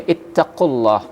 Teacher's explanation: huruf Ta ini salah satu sifatnya itu adalah hams ya jadi artinya ee mengucapkan huruf tersebut ya tidak boleh tertahan dia ya suara tidak boleh tertahan nafas tidak boleh tertahan ada sedikit yang timbul ya atau yang terdengar ya di dalam